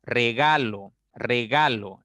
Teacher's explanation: la mayor fuerza está en la sílaba del medio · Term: acento fonológico